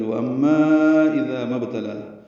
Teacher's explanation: ذال نرمی سے اور میم کو با سے ملانا ہے، با ساکن پہ قلقلہ ہے، لام کو دو حرکات لمبا کرنا ہے